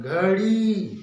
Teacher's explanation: घड़ी, घ पे ज्यादा जोर रहता है, घ में घोषक तो होता है, कंपन ज्यादा होता है।